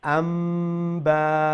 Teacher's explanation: আমরা আন না হইয়া আম হইমু, আর একটা নেজাল সাউন্ড দিয়া গুন্না সহিত হইমু আম্বা। ওই লগি একটা রুল, বুঝতে পারছেন নি? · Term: ইকলাব